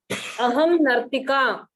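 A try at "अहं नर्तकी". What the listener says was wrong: Nartaki. All of you, please correct it as Nartaki. Nartika is wrong. Yeah. Make it Nartaki.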